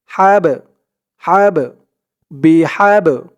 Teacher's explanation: এই বা টা হচ্ছে কলকলার হরফ ধাক্কা দিয়ে পড়তে হবে